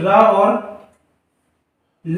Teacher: रा और ला ये हमारे बोले जाएंगे किससे, वर्त से, यानी दंत मूल से